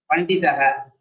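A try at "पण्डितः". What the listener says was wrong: Panditah. Very good.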